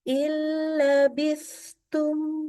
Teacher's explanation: nunnya hilang seluruhnya karena melebur keelam